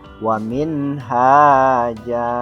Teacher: Karena yang seharusnya ketika diwasal itu punya hukum tanwin, tergantung kepada huruf selanjutnya, akan tetapi ini berhenti, maka berhentinya tidak menggunakan tanwin saat dibaca, tapi cukup dengan hukum seperti mad tabi'i. Akan tetapi karena di akhir kalimat, maka hukumnya dinamakan mad iwad.